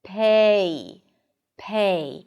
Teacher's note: So, it's a changing vowel. You keep moving your tongue as you pronounce this sound.